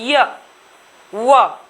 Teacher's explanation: किसी भी प्रकार का संघर्ष नहीं है, इसीलिए इन्हें अर्ध स्वर भी बोला जाता है।